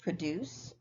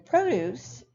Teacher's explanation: And with those, you might notice that they have the same spelling, but they have a different stress pattern. Produce, the verb, is stressed on what we call the second syllable, whereas the noun produce is stressed on the first.